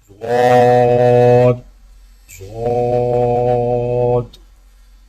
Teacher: زبان کے موٹے کنارے کو اوپر والی داڑھوں کی جڑ پر آہستہ آہستہ نرمی سے لگا کر خوب موٹی اور دراز آواز میں پڑھیں، یعنی ضاد ضاد۔